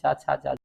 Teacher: च वर्ग का उच्चारण तालु से होता है